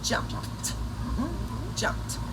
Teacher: quando o som daquela última consoante do verbo é voiceless, quando não vibra, no passado, o D será pronunciado como T.